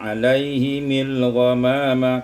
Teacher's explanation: kasrul mim waslan, dibaca kasrah mim kalau diwasalkan